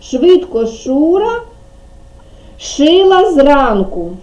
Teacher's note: при вимові звук ш заважають зуби язичок впирається в зуби